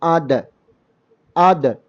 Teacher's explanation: സ്വരവാരം ഇല്ലാതെ പറയേണ്ട ഒരു ഹർഫും കൂടിയാണ് ദ ദി ദു എന്ന് പറയാം സുക്കൂനോടുകൂടി പറയുമ്പോൾ അതിന് കൽക്കല എന്നൊരു സിഫത്ത് കൂടി വരും